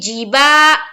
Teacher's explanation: جزم ہے، نل، جبالو، جیم کو جلد ادا کریں گے لیکن معروف پڑھیں گے، با میں الف مدہ ہے، الف ایک الف کے برابر کھینچیں گے